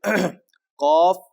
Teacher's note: اس کا مخرج قاف تالو سے ادا ہوتا ہے، بالکل تالو کا اوپر والے تالو کا نرم حصہ آخری، وہاں سے یہ ادا ہوگا